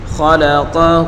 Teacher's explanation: ہا کے اوپر الٹا پیش ہے، اس کو ایک الف کی مقدار کھینچ کر پڑھیں گے